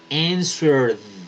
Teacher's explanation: Si se dan cuenta que la R hace que vibren la garganta, entonces cuando vibran, lo que sigue suena como la D de dedo, no la ED, sino solo la D.